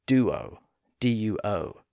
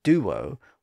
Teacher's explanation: that U or ooh sound often bleeds over into the following vowel sound and becomes the first part of that second syllable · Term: W sound